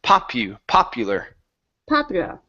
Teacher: so stress at the beginning